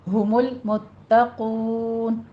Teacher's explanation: تا کی صرف تشدید ادا کرنی ہے، سختی کرنی ہے لیکن تا کو موٹا نہیں کرنا کیونکہ آگے قوف ہے تو قوف کی وجہ سے پچھلا تا موٹا نہ ہو جائے، اس کو باریک ہی رکھنا ہے۔ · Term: تا باریک